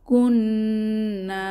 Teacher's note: পড়তে হবে লাউ জবরের বাম পাশে যজমলা ওয়াও লাউ কুন্না এখানে নুনের উপরে তাসদিদ ওয়াজিব গুন্নাহ করতে হবে